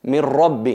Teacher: no hay la existencia del nun porque totalmente está fusionada en la ra. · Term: fusión completa